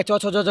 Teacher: तालु से उच्चारण होने वाला वर्ण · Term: चौ वर्ग